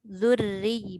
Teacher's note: Kita muncul bibir. Ra tu nipis.